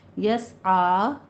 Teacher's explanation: عین کو وسط حلق سے ادا کرتے ہوئے 2 کاؤنٹ کرنا ہے